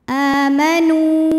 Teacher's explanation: cara membacanya dipanjangkan nunnya dua harakat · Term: Mad Thobi'i